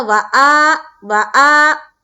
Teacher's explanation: زبر ہے، تو واو کو تو جلد ادا کریں گے، اور حمزہ کے اوپر جو کھڑا زبر ہے اس کو ہم ایک الف کے بقدر کھینچیں گے